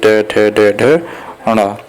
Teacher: ट वर्ग मूर्धा में आते हैं